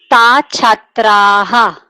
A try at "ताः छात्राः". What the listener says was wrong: विसर्गः अपि अस्ति।